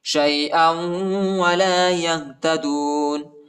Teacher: حمزہ کو واو کے ساتھ ملائیں گے، ٹھیک ہے. واو پر شد آیا ہے اور غنہ بھی کریں گے